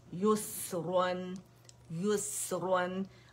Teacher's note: आपने या के ऊपर तो होंठों को गोल रखना है, सीन पे नहीं रखेंगे। ठीक है, तो क्योंकि सीन में क्या है, सुकून का साइन, वापस अपनी जगह पे आ जाएंगे।